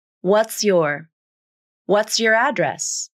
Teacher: be pronounced just like how it is transcribed what's your address you can pronounce a clear ts cluster at the end of the word what's and then a clear yah consonant at the beginning of the word your